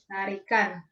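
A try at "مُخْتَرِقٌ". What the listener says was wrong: Pakai kho ya. Kho, khi, khu, bakh, mukhtarikun.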